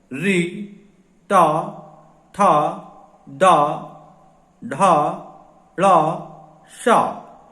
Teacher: हम देखते हैं कि तालू के हिस्से में जहां हमारी जीभ मुड़कर स्पर्श करती है मूर्धा कहलाता है,